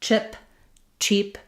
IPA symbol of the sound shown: tʃ